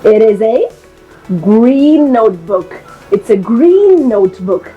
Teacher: we are merging the n Sound we are linking this sound